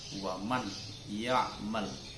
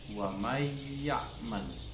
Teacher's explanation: nunnya seakan-akan masuk kepada huruf idgham itu, nun hilang, tanwinnya hilang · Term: idgham ma'al gunnah